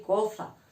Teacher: El ceceo, al revés, en vez de decir una S, decir una Z. Por ejemplo, en vez de decir cosa, decir coza.